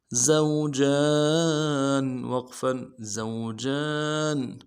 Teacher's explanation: زا کو تھوڑا سا سیٹی کی آواز نکلے گی